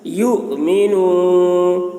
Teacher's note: حمزہ کے اوپر جزم ہے تو جھٹکا لگے گا